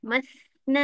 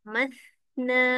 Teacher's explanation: Bagi masa lebih sikit sebab tha mati ada angin yang lebih. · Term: Rokhawah